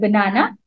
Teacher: In the word banana, the first and third syllable are unstressed. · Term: Unstressed syllables